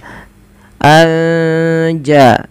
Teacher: cara membacanya menyamarkan suara nunnya kepada huruf ja an ja sambil ditahan dua harakat kemudian padafal jaahum padafal ja · Kemudian melafal anja'ahum ada nun sukun bertemu jim, maka kita hukumi dengan bacaan ikhfa hakiki. Cara membacanya menyamarkan suara nunnya kepada huruf ja, anja, sambil ditahan 2 harokat.